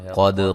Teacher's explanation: قد قاف کو موٹا، دال پہ قلقلہ.